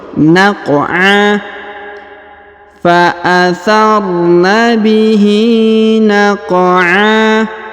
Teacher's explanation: Huruf qaf dipantulkan ya, atau dikolkolahkan karena berharokat sukun.